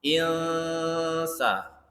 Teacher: Nah, samar-samar dengungnya. Insa, n-nya tuh tidak membentuk n permanen, tidak juga membentuk huruf eng. Samar-samar. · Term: ikhfa